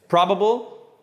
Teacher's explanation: the a is always pronounced like at the dentist ah with a big mouth